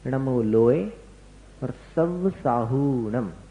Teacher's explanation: तो लोए में जो ए है, लोए, उस ए को खींचना नहीं, उस ए को कम समय में बोलना, एक मात्रा में पढ़ना